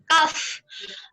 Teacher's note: pangkal lidah sedikit ke depan setelah qaf, yaitu kaf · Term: huruf kaf